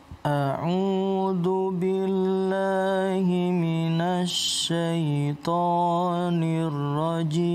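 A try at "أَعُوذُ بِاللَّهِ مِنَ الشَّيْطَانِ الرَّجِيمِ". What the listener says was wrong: Itu huruf shin. Minash, bukan minas ya. Ada sin, ada shin. Minasyaitonir rajim. Bacanya jangan kayak malas-malesan. Jadi bacanya yang semangat. A'udzu billahi minasyaitonir rajim.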